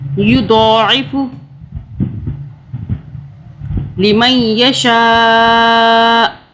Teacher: یضاعف، اس کو دو پڑھیں گے، دال کی آواز نہیں آئے گی، دو پڑھیں گے اور یہ عین ہے اس کو حلق سے ادا کریں گے